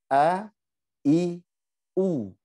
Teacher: Jadi kalau bisa bunyi a, bisa bunyi i, bisa bunyi u itu namanya hamzah. Coba perhatikan huruf hamzah keluar dari pangkal tenggorokan.